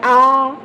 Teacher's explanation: तो विवृत स्वर में आपका मुंह पूरा खुलता है